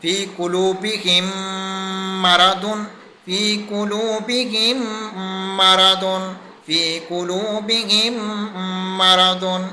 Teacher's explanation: میم ساکن کے بعد جب بھی حرف میم آ جائے تو وہاں پر ہم نے ادغام شفوی کرنا ہے، یعنی ایک میم کو دوسرے میم کے ساتھ مرج کر کے پڑھنا ہے